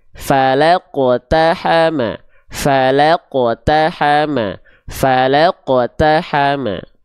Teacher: pantulkan dengan tebal karena Q sukunnya adalah huruf yang tebal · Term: qqalah